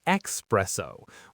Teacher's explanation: The incredibly common incorrect pronunciation is espresso with a hard X sound at the beginning.